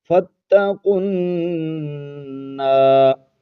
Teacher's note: نون پر شد ہے، غنہ کرنا ہے، آواز کو ناک میں چھپانا ہے۔ قرآن مجید میں جہاں بھی نون پر شد ہوگی غنہ ضرور ہوگا۔